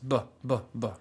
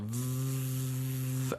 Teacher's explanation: vet you can hold v as long as you want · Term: soft consonant